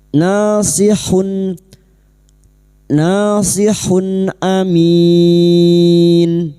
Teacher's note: Idhar halqi. Duma tanwin dibaca jelas tanpa mendengung.